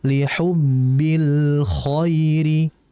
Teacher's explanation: Lam memiliki sifat tawassuto atau beniyah. Maksudnya adalah kita harus mengalirkan al-nya. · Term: Lam al-qamariyah